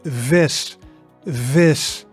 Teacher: sometimes closer to the English F, especially at the beginning of words. So in this one, the V is quite a strong V, right? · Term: V sound